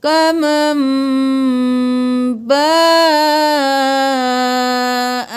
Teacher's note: با کو 5 الف کے برابر کھینچنا ہے، مد ہے